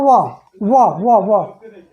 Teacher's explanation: व यानी दांत का इसमें टच हो रहा है, व और ओठ, यानी दंत प्लस ओष्ठ, दंतोष्ठ